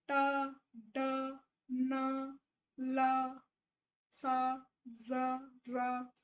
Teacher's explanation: टंग touches alveolar रिच। जो आपकी जो टंग है ये ऊपर वाला जो आपका मसूड़े का पीछे का हिस्सा होता है उसको टच करेगी।